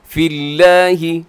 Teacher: یہاں لفظ اللہ باریک ہوگا کیوں لفظ اللہ سے پہلے فا کے نیچے زیر ہے،